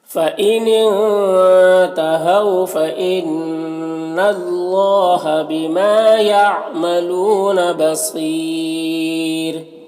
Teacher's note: را کو یہاں پر باریک پڑھیں گے، کیونکہ رائے ساکن سے پہلے یا ساکن ہے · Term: را کو باریک